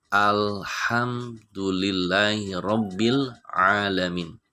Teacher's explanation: Di dalam surat Al-Fatihah ayat yang kedua itu jelas alnya al-qamariyah, sebab alif lam di situ berjumpa dengan huruf ha. Ha itu adalah bagian daripada huruf qamariyah, maka alif lamnya dibaca dengan jelas. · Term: idhar qamariyah